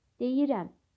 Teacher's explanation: Amma deyirəm sözündə vurğu sonda deyil.